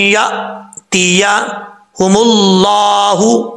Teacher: हमजा साकिन झटके के साथ पढ़ा जाएगा।